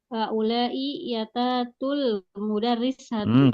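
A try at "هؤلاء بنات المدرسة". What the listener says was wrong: Coba teliti lagi bacanya. Ini bukan haulai liyatatu, tapi apa? Haulai banatul.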